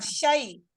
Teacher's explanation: yang pasti dia lebih dari 1 harokat dan kurang dari 2 harokat. Jangan dibilang 1,5, karena enggak ada angka itu, gitu ya. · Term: lin